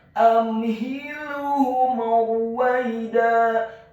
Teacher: Amhilhum, huruf mim yang sukun bertemu dengan huruf ra yang dhammah. Hukum bacaannya adalah izhar syafawi, dibaca dengan jelas, tidak boleh digunahkan atau didengungkan huruf mim yang sukunnya.